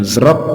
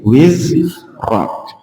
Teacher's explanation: Jadi bukan zrok tapi wizrak. Jadi zaknya ditahan